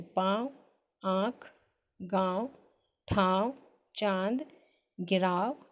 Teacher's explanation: अनुनासिक के उच्चारण में ध्वनि मुख के साथ साथ नासिका द्वारा या नासिका को छू कर निकलती है, अर्थात अनुनासिक की ध्वनि नाक और मुंह दोनों के साथ साथ निकलती है